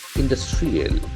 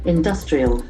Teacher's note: The accent falls on the second syllable.